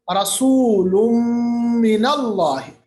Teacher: رسول ملایا، ناک کے اندر آواز لے گئے، ادغام بغنہ۔